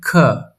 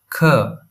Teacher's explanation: It's a k with a puff of air. Hold your hand near your mouth and feel the breath.